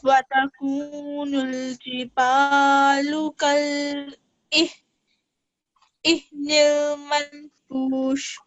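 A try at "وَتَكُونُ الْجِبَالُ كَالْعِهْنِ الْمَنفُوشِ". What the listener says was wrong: And here the ayn. Okay, try to pronounce the ayn better. Al-aynil manfush. This is a nasal sound for 2 seconds, okay?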